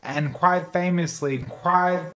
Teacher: There's also audible throat constriction in his Price diphthong, at least in this clip.